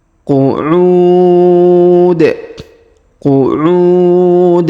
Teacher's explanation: huruf u kita panjangkan boleh dua harakat boleh empat boleh enam harakat